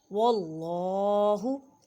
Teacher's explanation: अल्लाह के लफ्ज़ को मोटा पढ़ें क्योंकि अल्लाह के लफ्ज़ से पहले ज़बर है